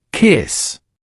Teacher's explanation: The last sound is s voiceless.